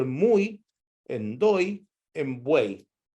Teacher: En esas tres palabras, ustedes pudieron escuchar que el acento está en otra vocal, pero no en la I. Porque si el acento estuviera en la I, tendríamos que escribirlo con I la latina, como sucede en fui o en ui.